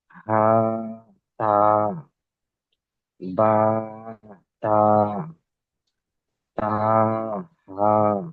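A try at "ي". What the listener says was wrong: তা নয়, ইয়া, কারণ নিচে নিচেই দুই নোক্তা এসছে, যদি উপরে হতো তাহলে তা হতো।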